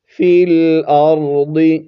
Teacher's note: خلق لکم ما فی الارض، فا لام زیر فل، فا کو لام کے ساتھ ملائیں گے، فا لام زیر فل، حمزہ را زبر ار، ضاد زیر ضی، فی الارض، را اور ضاد دونوں کو ہم نے موٹا کر کے پڑھنا ہے